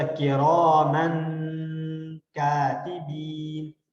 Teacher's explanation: جس طرح کرامن کاتبین، من ہم ایسے کر رہے ہوتے ہیں ناک کے اندر ساؤنڈ موو کرتے ہوئے، من کاتبین شارٹ کٹ نہیں کرتے، کرامن کاتبین، اس طرح سے ہم غنہ کر رہے ہوتے ہیں کیونکہ ڈبل زبر ہے۔